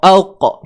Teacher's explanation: Huruf Qaf ni datang daripada pangkal lidah.